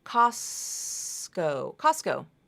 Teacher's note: You have an S, T, and a K consonant sound. That T often is dropped, Costco. And that's how you pronounce it. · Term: rule of three